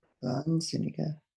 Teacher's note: You make the A longer because there's an H after it.